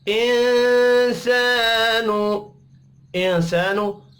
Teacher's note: इंसानु, इंसानु नून साकिन के बाद सीन है, इख्फ़ा हकीकी होगा। अलिफ मद्दा को एक अलिफ के बराबर खींच कर पढ़ेंगे।